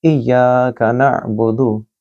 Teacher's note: या के बाद अलिफ मद है, लिहाजा इय्याका या को लंबा पढ़ा जाएगा